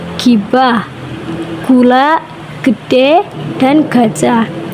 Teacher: Vonem G dihasilkan pada tempat yang sama dengan vonem K, yaitu di langit-langit lunak. Bedanya ketika mengecapkan huruf G, pita suara itu ikut bergetar sehingga disebut bunyi bersuara. · Penutur dialek Tegal mengucapkan bunyi G secara penuh sehingga terdengar lebih mantap. Bunyi G ini tidak dilemahkan.